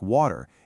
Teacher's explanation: In British English, the T in the middle of a word like water is usually pronounced very clearly. But in American English, that T often softens into a D sound, known as a flap T, which makes it sound more like water.